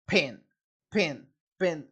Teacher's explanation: In the Southern American English dialect, there is a merger of the word pin and pen